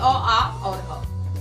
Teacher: ये अ, आ और ह, तो इनका उच्चारण स्थान कंठ है